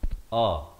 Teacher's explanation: Hamzah di pangkal kerongkong